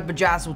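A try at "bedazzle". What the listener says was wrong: Just don't go back to that word. Just drop the J.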